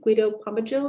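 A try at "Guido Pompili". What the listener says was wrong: The J is pronounced like an I, so it's Pompili.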